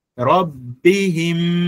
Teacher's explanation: asili ya mim ikiwa na shadda ni ghunna, inakuwa ndefu yenyewe